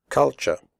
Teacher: However, you should pronounce the word culture correctly. The first U is pronounced like the U in but, and the last syllable is pronounced ch.